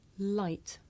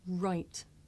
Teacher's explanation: I make the l sound with the front part of my tongue behind my teeth, and I make the r sound by making my lips come out and pulling my tongue back.